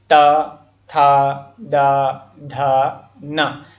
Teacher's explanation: जिनके उच्चारण में दंत आपस में मिलती हों उन्हें दंत व्यंजन कहते हैं।